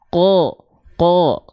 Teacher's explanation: huruf qof kita lafalkan bukan Q tapi condong malah ke vokal o